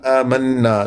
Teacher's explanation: آمنا نون پر شد ہے، غنہ 2 حرکتوں کے برابر دیر، ناک میں آواز کے گنگرانے کو غنہ کہتے ہیں